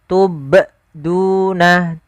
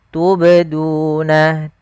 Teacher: Yang tepat adalah dia huruf qalqalahnya memantul sambil mengalir. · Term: qalqalah sughra